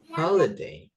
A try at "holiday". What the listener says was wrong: It's not holy but holiday.